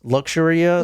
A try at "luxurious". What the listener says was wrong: Missing a syllable there.